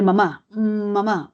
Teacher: Con la boca cerrada, usted está pronunciando la M. ¿Se da cuenta? Y el aire sale por la nariz.